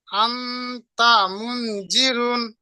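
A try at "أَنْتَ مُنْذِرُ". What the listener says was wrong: মুন গুন্না হচ্ছে না, মুন গুন্না হবে, নুন সাকিনের পরে জাল এসছে, হরফে একবার 15টি অক্ষরের মধ্যে জাল এসছে। আন তা মুন জিরু। মুন জিরু র পেশ রু। জিরুন বলছেন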